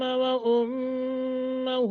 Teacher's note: وَأُمَّهُ میم مشدد ہے، غنہ کر کے پڑھیں گے